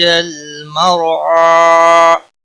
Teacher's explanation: مرعا را ساکن سے پہلے زبر ہے اس لیے را موٹا پڑا جائے گا۔ عین کے اوپر کھڑی زبر ہے، ایک الف کے برابر کھینچ کر پڑھیں گے، وقف کی صورت میں بھی۔